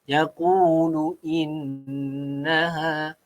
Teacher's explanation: Ini adalah wajib al-gunnah. Dengung 2 harakat.